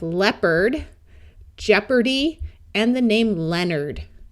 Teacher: sound more like er rather than a clear Ard sound